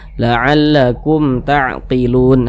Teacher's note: hukumnya dibaca jelas tak berdenggung baca pendek saja